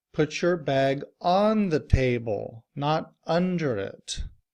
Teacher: because I want to emphasize where to put the bag I put stress on those function words